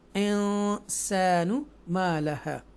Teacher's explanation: after a नून साकिना सीन is coming, सो this सीन is इख्फ़ा letters and they were 15 इख्फ़ा letters, सो we make a गुन्ना here